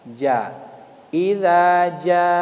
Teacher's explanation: Huruf za itu makhrajnya adalah lidah bagian tengah dengan langit-langit lurus ke atas